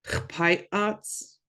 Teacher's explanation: That glottal stop kind of pauses that word.